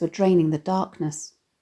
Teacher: the heaviness of the plosive /d/ sounds in the alliterative “draining the darkness”